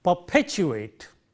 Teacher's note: the first one is unaspirated, the second one is aspirated because of the positioning of the stresses there, and therefore, we would say perpetuate.